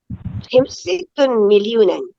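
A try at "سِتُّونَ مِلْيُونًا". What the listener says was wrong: Bukan situn. Situna. Ada una. 60 juta itu situna. Situna. Situna. Bukan situn. Kalau situn 6. Kalau 60 situna. Milyunan.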